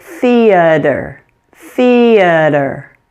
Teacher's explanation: the flap T will sound like an English D but depending on your native language you may say it sounds like an R